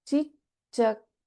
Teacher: we have the first letter Alpa Pranacha, and in the next one we are seeing both Alpa Pranacha as well as Mahaprana Cha